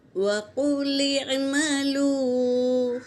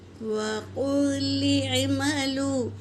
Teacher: لام کو عین میں ملائیں گے